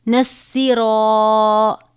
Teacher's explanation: را کے اوپر زبر ہے، را بھی پر ہوگا